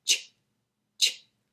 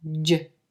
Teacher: And our final pair, the CH, ch, voiceless, the J sound is the same sound. It's made the same way, except you're adding the voice.